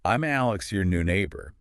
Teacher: The M in I'm just flows right into Alex. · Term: connected speech